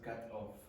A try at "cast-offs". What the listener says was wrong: Yeah, cast-offs. Cast-offs. Because the first time you said cat-offs. You murdered your cat and then you created a sweater out of the cat. The cat-offs. Okay, so cast, everyone? Cast-offs.